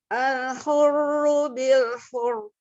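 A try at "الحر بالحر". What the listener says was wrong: Oke, hati-hati ya, alnya tipis ya. Al-hurru. Jangan jadi malah kayak tebal semua nih.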